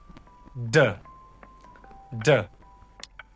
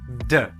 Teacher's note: when you say d, you can feel vibration in your throat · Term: voiced alveolar plosive